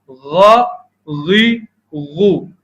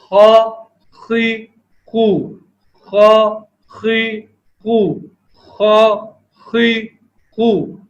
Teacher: غین خا حلق کے اوپری ابتدائی حصے سے ادا ہوتے ہیں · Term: غین اور خا